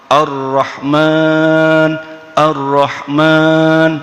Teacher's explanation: Yang paling mendasar karakter huruf ra itulah takrir, getarannya hanya boleh 2, 3 masih dimaafkan, kalau 4 sudah berarti menambah 1 huruf ra. Tidak boleh begitu, cukup biasa Ar-Rahman, Ar-Rahman, sudah.